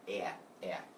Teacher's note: in America it's a very a very nasally sound it sounds like it's coming from your nose